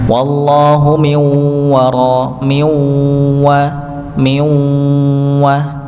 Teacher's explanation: sebagian ada lewat mulut, sebagian lewat hidung, tidak sempurna dengungnya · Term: idgham nakis